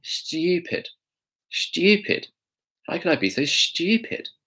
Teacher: She kind of actually emphasises the T. And a lot of British people do that.